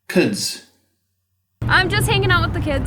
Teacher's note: The KIT vowel which sounded almost New Zealand like